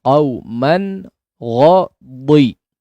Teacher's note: Lihat dad. Meskipun dia kasrah tetap ditebalkan. Jangan jadi dal ya. Huruf dadnya disempurnakan.